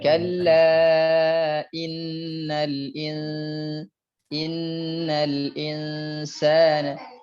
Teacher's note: harusnya inna dengan insa itu sama panjangnya, sama tempo gunnahnya sama